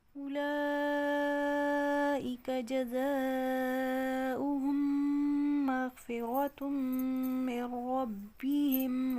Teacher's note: غین موٹا پڑا جا رہا ہے، را بھی موٹا پڑا جا رہا ہے، را کے اوپر فتح ہے